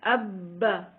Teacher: شد والے حرف سے پہلے حرف کو بھی لمبا ہونے سے بچائیں، ابا سے آبا نہ ہو جائے